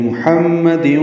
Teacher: میم مشدد پہ غنہ کریں گے